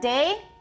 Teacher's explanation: we've got the tip of the tongue touching the alveolar ridge. We've got the velum raised.